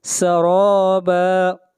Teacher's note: را کو موٹا پڑھیں گے، را کے اوپر فتحہ ہے